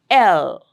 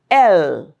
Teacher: And that's uh that's a place through which the air is let out. The air passes through the side opening. And it is alvolar. · The tip of the tongue is touching the alveolar ridge and the sides are open, and that's how the sound is produced. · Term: lateral approximate, lateral, L sound